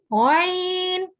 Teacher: غین، یہ اوپر والے حلق سے ادا ہوتا ہے